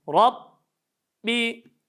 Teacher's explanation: az bir parmak işaret parmağı sığacağı şekilde ağzımız açılması gerekir Rabbi B harfi şeddeli bir ses tamamen kesilir